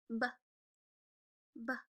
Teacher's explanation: your lips are pressed together. And can you feel them pop open when you make the b sound?